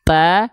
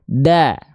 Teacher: kalau huruf ta dia ada percikan nafas, ta, kalau dal nggak ada percikan nafasnya, da. Lebih ditekan lagi kalau huruf dal, ya.